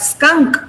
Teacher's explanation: but skunk, when you say, it is not aspirated